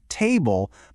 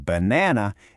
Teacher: Emphasizing the first syllable in table, but the second syllable in banana, is exactly what gives English its distinct melody. If you put the stress on the wrong syllable, even if your vowels are flawless, your vocabulary can become totally unrecognizable to a native speaker. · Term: word stress